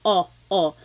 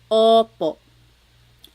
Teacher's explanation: Sometimes I think of it like having a ball in your mouth. Your tongue gets kind of pushed back and down a little bit and the inside of your mouth is open and wide. So Oo, like OPO. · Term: letter O